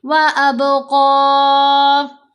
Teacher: اب با پر کلکلا، قاف کو موٹا بھی کریں گے ، حرکت کے ساتھ پڑھتے ہوئے مد عارض بھی لگائیں گے،